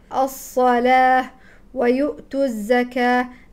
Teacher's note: الواو في الصلاه والواو في الزكاه يكتب لكنه لا ينطق هكذا تكتبها العرب لكنها لا تنطقها لا تقول الصلوات ولا الزكواه